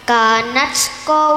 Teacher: jika wakof di ro yang awal ro-nya dibaca panjang